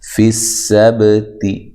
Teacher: سین کو باریک سیٹی سے ادا کرنا ہے